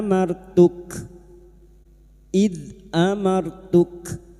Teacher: huruf kaf ini memiliki sifat hames dan syiddah yaitu mengalirnya nafas dan tertahannya suara maka pada saat dibaca wakaf bunyinya ee Amartuk id amartuk qola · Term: hamas dan syiddah